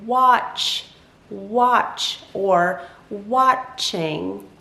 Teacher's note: it's like the ah sound, but it's like a little bit stretched.